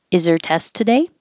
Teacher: get rid of the H connect the Z to the ER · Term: H deletion